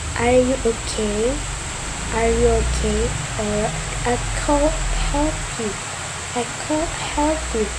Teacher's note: And the last one is combining intonation. It's the combination of raising intonation and falling intonation.